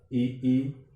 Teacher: ई का उच्चारण करते समय जिह्वा तालु की ओर अग्रसर होती है। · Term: तालव्य स्वर